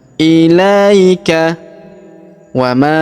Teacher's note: Perhatikan huruf la kita ayun sekali karena terdapat ia sukun di depannya.